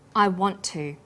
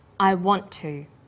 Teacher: Then to is pronounced. The t sound is pronounced only once. I want to. This type of linking is called consonant plus same consonant linking. · The final t sound in want is held slightly longer on the tongue. Then to is pronounced.